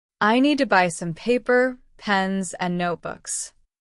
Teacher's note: That falling tone on the last item shows the list is finished. · Paper up, pens up, notebooks down.